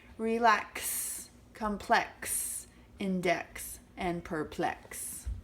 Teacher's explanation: xylophone it really sounds like a Z doesn't it and remember the X sound is really a K and an S sound · the X sound is really a K and an S sound right next to each other